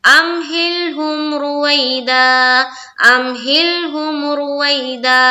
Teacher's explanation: آواز رک گئی، ہل آواز لام میں رک گئی، ہم میم کی مخرج پر آواز رک گئی، اس طرح سے پڑھنا.